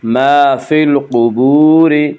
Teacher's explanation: قاف کو پر پڑھیں گے، قاف حروف مستعلیہ میں سے ہے، حروف مستعلیہ 7 ہیں جن کا مجموعہ خصہ ضغط قز ہے، جو ہمیشہ ہر حال میں پر پڑھے جاتے ہیں۔